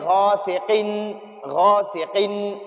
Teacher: سے حمزہ آیا ہے، حروف حلقی میں سے حمزہ آیا ہے، تو اب دو زیر تنوین میں ہم غنہ نہیں کریں گے